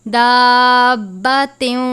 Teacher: ہم تنوین کو واو مشدد سے ملا کر ادا کریں گے